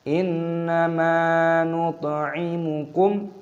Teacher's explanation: Dibaca sebagai izhar syafawi. Jadi jangan membacanya sambil bersenandung. Kami membacanya dengan jelas.